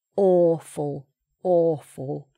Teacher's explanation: there's a w there but we don't say wa, awa, awa, wa like that; it's just or - it's an open, circular shape.